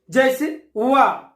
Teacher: छठा है दंत ओष्ठ व्यंजन, जिसमें दांत और ओष्ठ दोनों का प्रयोग होता है। जिन व्यंजनों के उच्चारण में निचला ओष्ठ दांतों से स्पर्श करता है, वे दंत ओष्ठ व्यंजन कहलाते हैं।